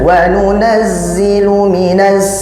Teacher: huruf zai itu memiliki sifat sofir, tidak berlawanan, dia memiliki sifat sofir, artinya bersiul. Kalau dibaca wa nunazzilu, ini sudah wa nunazzilu minas sama.